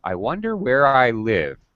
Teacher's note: her voice her pitch her tone dropped at the end of the sentence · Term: final falling intonation